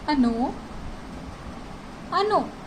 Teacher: यहाँ पे stress second vowel पे है, यानी ओ पे है, तो अगर ओ पे स्ट्रेस है तो उसे हम ओ ही प्रोनाउंस करेंगे।